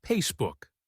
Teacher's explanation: the F sound is often pronounced as a P. So, Facebook might sound like Facebook.